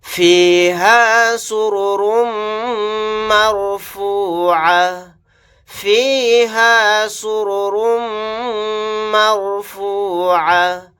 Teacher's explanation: یہاں پر را کو اور دوسرے را کو موٹا یعنی پر پڑھیں گے